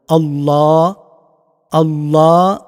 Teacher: এই আল্লাহ শব্দটিকে মুখ ভর্তি করে উচ্চারণ করবেন। এটা পুর করবেন।